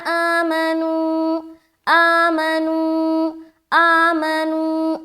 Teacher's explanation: آ کو کھینچ رہے، منو نو میں کھینچ رہے، میم کو جلدی پڑھیں گے